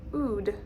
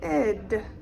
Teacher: the round sound goes out and the smile comes in